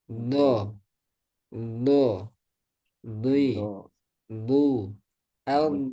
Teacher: Bergeraknya lidah ke depan setelah tepi lidah menempel pada gigi geraham atas.